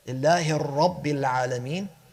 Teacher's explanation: joining the ha in Allah with the ra in Rabb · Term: idgham